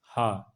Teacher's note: हा का उच्चारण स्थान है ये स्वर यंत्र